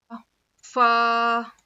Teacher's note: سامنے کے 2 دانتوں کے کنارے کو نیچے کے ہونٹ کے اندر کے حصے مطلب گیلے حصے کو لگانے سے فا ادا ہوتا ہے.